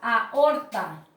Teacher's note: Aquí puedo observar que la A es una vocal abierta y la O también es una vocal abierta, ¿verdad? Entonces se produce el hiato.